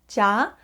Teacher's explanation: when you say the syllable ja your tongue kind of touches the roof of your mouth a little bit so you have this kind of d sounding effect at the beginning of the syllable